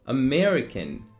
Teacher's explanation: you need to put the stress on me